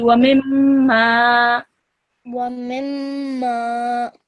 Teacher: you have to prolong this mim gunna sound because there's an alif in front of it